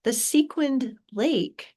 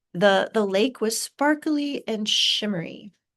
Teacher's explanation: The sequined lake has more stressed syllables and so it packs a little bit more of a punch versus the lake was sparkly and shimmery, right? There's more of a rise and a fall.